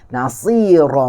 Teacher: ra berbaris di atas. Maka dia akan jadi tebal dan alif ni juga akan jadi tebal. Nasira, mat ni juga akan jadi tebal.